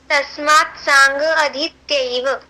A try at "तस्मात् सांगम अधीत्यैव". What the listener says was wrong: तस्मात् सांगम अधीत्यैव, म भी पूरा बोलना है। तस्मात् सांगम अधीत्यैव ब्रह्मलोके महीयते।